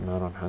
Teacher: you say it clearly, you don't put any ghunnah on